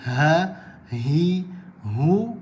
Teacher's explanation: ha, hi, hu keluar daripada bahagian pangkal kerongkong